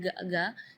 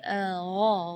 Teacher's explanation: Di ayat ini yang pertama di makhraj huruf ghain ya, ghairil maghdubi ya, perlu diperhatikan, bukan G, bukan huruf G ya, bukan ga, tapi gha. Jadi kalau ga itu dia makhrajnya dari lidah. Ya, tapi kalau huruf ghain itu dari bagian tenggorokan